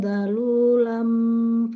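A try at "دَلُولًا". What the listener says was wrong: Masya Allah, itu dalulang itu bukan dalulam. dalulam? Bukan dalulam, Hifa. dalulam, dalulang.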